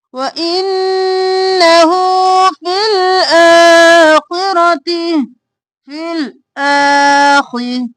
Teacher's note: ہو کھینچیں گے الٹا پیش ہے